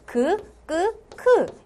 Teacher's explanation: 여기는 혀 뒤라고 합니다. 그래서 여린 입천장과 혀 뒤가 만나서 크 이런 소리들이 난다.